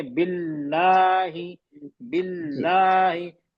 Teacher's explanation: पहले लाम पे, सकीन वाले लाम पे जोर दे रहा हूँ